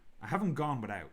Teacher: When I'm saying without, when I'm saying the out part, my tongue is like hitting the roof of my mouth.